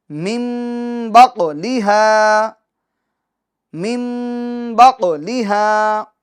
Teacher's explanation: قاف میں قلقلہ کریں گے آواز لوٹ کر آئے گی